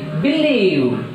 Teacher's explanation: so that stress takes place on second syllable. Now see, believe, so B is a prefix, so that li is a second syllable, so that stress takes place on second syllable, li.